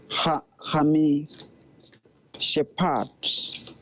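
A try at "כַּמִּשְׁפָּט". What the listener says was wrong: Go ahead and close this syllable. Ka-mish. Right. kamishpat.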